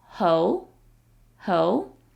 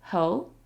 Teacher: It's second tone, so it sounds a little inquisitive